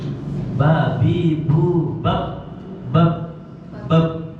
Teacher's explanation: Tidak ada nafas yang keluar. Bab, bab. Enggak boleh bab, bab.